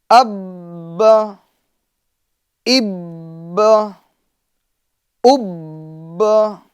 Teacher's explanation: یہ با میں ہمیں جماؤ کرنا ہے، قلقلہ ہوگا مگر جماؤ والا قلقلہ ہوگا.